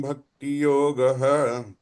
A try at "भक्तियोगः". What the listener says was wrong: Third line again, your bhakti yogaha, you're saying it's bhakti yogas twamula deva. Visarga will take a is sound if you have a visarga there.